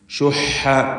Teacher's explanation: ഹാ തൊണ്ടയുടെ മധ്യത്തിൽ നിന്ന് ഉച്ചരിക്കേണ്ട അക്ഷരമാണ്. വസത്തുൽ ഹൽഖ് ആണ്.